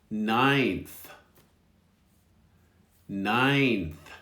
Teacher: We don't actually say the second N very strong.